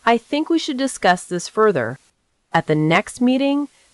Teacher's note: use a slight rise before the final phrase